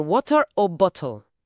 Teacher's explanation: la lengua golpea tan rápido el paladar que el sonido se suaviza enormemente y para un oído hispanoha hablante acaba sonando de forma muy parecida a una r suave o una dbil. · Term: flap